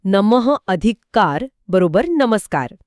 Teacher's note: विसर्गापुढे क ट किंवा प सारखी कठोर व्यंजने आली तर त्याचा स होतो